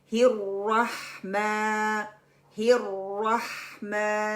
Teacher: मीम का sound हमने pronounce कर लिया और आ का साउंड सीधा निकलेगा। वो नाक के बांसे से आवाज बाहर नहीं आएगी।